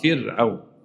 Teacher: فرعون مش صح، كسر قبلها ترقق